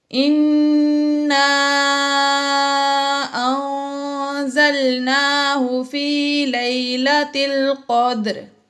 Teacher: حروف مدہ کے بعد حمزہ دوسرے کلمے میں آ گئی تو یہاں پر مد منفصل ہے، اس کو 2، 2.5 یا 4 الف تک کھینچ کر پڑھتے ہیں · انا میں نون مشدد ہے، یہاں پر ہم نے غنہ کیا